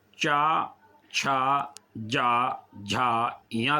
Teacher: चा, छा, जा, झा, या का उच्चारण तालु से होता है